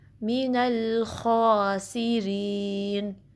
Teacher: خا کو 2 count stretch کرنا ہے، ہیوی پڑھنا ہے، حروف مستعلیہ میں سے خا، اور اس میں خراش واضح کرنی ہے. ٹھیک ہے، سین کی سیٹی واضح کرنی ہے.